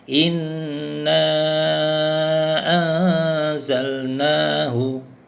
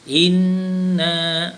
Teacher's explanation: nun syaddah dibaca dengung. Sebab tu ustaz baca tadi dengan panjang sedikit, 2 harakat.